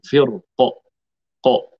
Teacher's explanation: أما عند الوقف عليها بالسكون ففي الراء التفخيم لا غير لزوال موجب الترقيق وهو كسر حرف الاستعلاء القاف